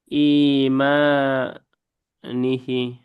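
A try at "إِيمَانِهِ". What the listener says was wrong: নিহি। ওখানে লম্বা নাই।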